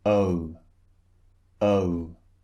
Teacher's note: So it starts relaxed, just like this, and then it turns into a rounded shape like O, O, so, so. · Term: two vowels squeezed together